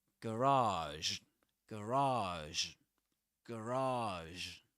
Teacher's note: But in American English, you get at the very beginning, in the first syllable, a schwa.